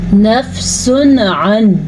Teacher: لیکن اگر حروف حلقی میں سے ہوگا، جیسا کہ ہم حروف حلقی 6 ہیں، حمزہ، ہا، عین، ح، غین، خا، اگر ان میں سے ہوگا تو نون ساکن اور تنوین کو ظاہر کر کے پڑھیں گے اور بغیر غنّے کے پڑھیں گے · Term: اظہار